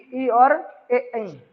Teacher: ए आगे है, बड़ी वाली ए ये भी आगे से है। ये दोनों चीजें आपकी जीभ के आगे वाले हिस्से से बोली जा रही है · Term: अग्र स्वर